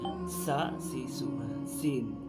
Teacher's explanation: জিহ্বার আগাটা নিচে 2 দাঁতের পেটে লাগিয়ে সিন উচ্চারণ করা হয়।